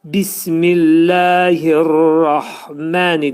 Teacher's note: Sonra bismillahir rahməni dedikdə ra hərfi burada təxvim oxunacaq. Yəni qalın şəkildə oxunacaq.